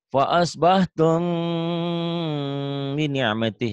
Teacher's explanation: ciri khas ikhfa itu bindeng ya